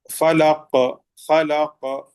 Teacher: آخری حروف میں قلقلہ ہو رہا ہے قاف میں